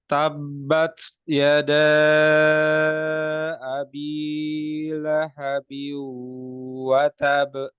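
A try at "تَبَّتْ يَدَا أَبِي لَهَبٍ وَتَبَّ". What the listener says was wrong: Huruf taknya ya, jangan sampai kayak huruf C dan S. Ya. Jadi udaranya itu sedikit saja dikeluarkan. Tabbat hamas ya. Sifat hamas ya namanya. Tabbat yada. Ingat sambil dibuka.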